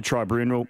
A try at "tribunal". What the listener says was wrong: So you went tribunal early and you put the R after the B. Tribunal. You go with like a funeral.